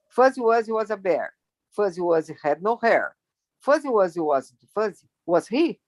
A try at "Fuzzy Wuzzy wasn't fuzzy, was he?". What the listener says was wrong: Close. Aí só um pouquinho mais ênfase no was do que he.